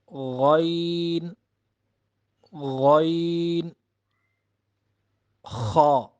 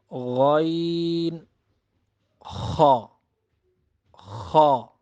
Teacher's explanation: اب جو 2 حروف رہ گئے یعنی غین اور خا، یہ کلوزسٹ پارٹ آف تھراٹ، یعنی حلق کا وہ حصہ جو منہ کی طرف ہے، وہاں سے یہ حروف ادا ہوں گے